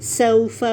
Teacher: سو کے لیے ہونٹ گول ہوں گے، سین کی وسلنگ ہے. فا کی مخرج پہ جائیں، صفات کلیئر کریں.